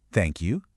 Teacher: See how my voice goes up? Suddenly, it sounds way more formal or maybe even dismissive. It's the kind of thing you hear a thousand times a day without any real feeling behind it.